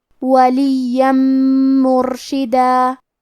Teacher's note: یہاں حکم ہے ادغام بغنہ تو ہم یہ حکم کو غنہ اور تشدید کے ساتھ ادا کریں گے